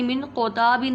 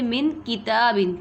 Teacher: من کتابن میں کاف میں اور قوف پہ فرق رکھیں گے، من قوتابن نہیں پڑھیں گے، من کتابن، کاف کو باریک پڑھیں گے، ڈنڈی والے کاف کو باریک پڑھیں گے